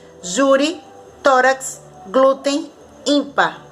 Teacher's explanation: paroxítona, penúltima sílaba mais forte